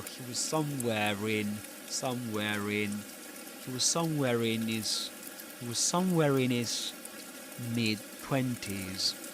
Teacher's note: you wouldn't usually pronounce the R in somewhere in this accent, but this is an exception because right after it comes the vowel sound I in the word in.